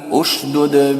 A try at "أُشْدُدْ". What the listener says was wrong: क्यों, तीसरे हर्फ पे पेश था, तीसरे हर्फ पे पेश रहने से उन्हें क्या करे, उशदुद पढ़े, उशदुद पढ़े हैं।